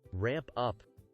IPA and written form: ræmp ʌp (ramp up)